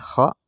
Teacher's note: Tempat keluarnya ada di tenggorokan.